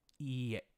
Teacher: So there's two e's, e elongated, and then e, iie. And you might notice this is creating a ye sound as you're saying it, iie, but there is no ye in the Japanese language.